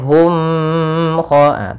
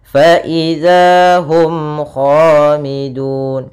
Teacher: suara mimnya harus jelas dan tidak boleh ditahan, tidak boleh hum kha, tapi langsung jelas. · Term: izhar syafawi